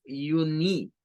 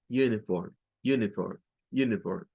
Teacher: Nuestro oído nos engaña y piensa que allí suena una I, pero no suena una I, suena un schwa. Es un schwa el que se debe de gesticular.